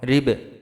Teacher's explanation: বায় জজম দিয়ে পড়লে বা কলকলা হবে